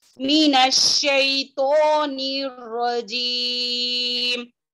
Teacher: अलिफ खंजरिया यानी कि मद्दे असली है, इसको 2 हरकत के बराबर खींचेंगे।